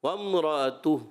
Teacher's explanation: جب آپ وقف کر رہے تھے تو ہا کی ادائیگی آپ کی کمزور پڑ گئی۔ وامرأتہ، ہا تھوڑا اور کلیئر کر دیں، وامرأتہ، ہا آپ کا کلیئر ہو جائے، پتہ چلے کہ آپ نے ہا پڑھا ہے، ٹھیک ہے۔